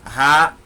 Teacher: É aquele ditongo em que o som sai totalmente pelo nariz. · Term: ditongo nasal